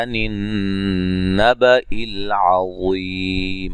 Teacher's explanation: यहाँ नून मुशद्दद पे गुन्ना ज़रूरी है